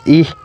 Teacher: a short and high front unrounded monophthong